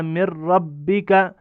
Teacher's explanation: میم کے بعد نون ہے، ہم نے نون کو چھوڑ کر را پڑھا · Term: ادغام